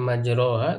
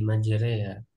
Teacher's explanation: tulisannya majroha tapi diimalahkan, condongkan kepada ya menjadi majreha · Al-imalah, Pak. Ya, imalah itu fathah condong ke kasroh, jadi e gitu kan